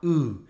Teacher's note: quand on part de fleece et que la langue va légèrement plus vers l'arrière, on obtient un U.